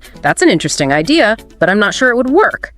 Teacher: that slight rise on work hints at your doubt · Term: slight Rising intonation, slight rising intonation